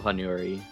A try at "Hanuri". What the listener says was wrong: Hanuri. There's no Y. I think you kind of blended our name and my name and her name.